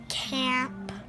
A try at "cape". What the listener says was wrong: No, there's no M. And when you have a silent E, what sound does A make?